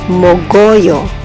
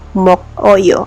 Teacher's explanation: The pronunciation is mogoyo, but the spelling is mok-oyo. Ang K na final becomes medial in the pronunciation. K will become G.